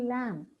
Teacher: but actually the letter B is absolutely silent